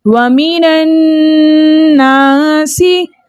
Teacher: اب یہاں پر الف خالی اور اس سے پہلے کسی بھی حرف پر زبر ہو تو ایسا الف مدہ کہلاتا ہے، ٹھیک ہے۔ الف مدہ کو 2 حرکت کی مقدار کھینچ کر پڑھتے ہیں، اس لیے ہم نے نون کے ساتھ جو الف تھا اس کو 2 حرکت کی مقدار کھینچ کر پڑھا۔